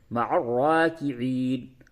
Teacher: یہ را کو پور کر کے پڑھیں گے. را مشدد ہے کھڑا زبر ہے اسے پور کریں گے